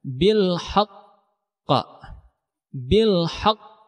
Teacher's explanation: pantulannya sangat kuat dan ada sedikit jeda sebelum pantulannya itu keluar Nah makanya ini disebutkan dengan Qalqalah Akbar hal ini terdapat pada